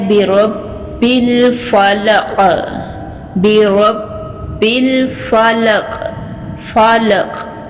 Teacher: قاف جو ہے یہ پر اور موٹا حروف ہے، اور اس کے نیچے جو زیر ہے یہ یہاں پہ قلقلہ بھی ہوگا